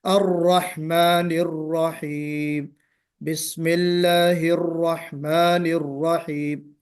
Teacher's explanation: دوسری چیز جو ہے وہ کہ الرحمن الرحیم کہتے ہوئے میں چونکہ بتا چکا ہوں کہ را میں صفت تکریر ہے، آواز ریپیٹ ہونی چاہیے